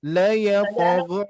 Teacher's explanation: huruf qalqalanya seperti biasa mengarah ke harokat fathah, ya. Jadi la yaqgha, ya, lebih ringan.